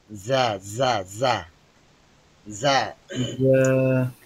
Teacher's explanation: জিহ্বার আগা নিচের দাঁতের গোড়াতে আসবে।